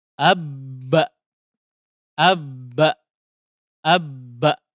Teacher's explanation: Bibir atas dan bawah dipertemukan keluarlah huruf ba